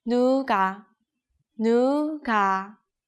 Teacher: when kiok is located in the middle of words, it sounds exactly like G of green.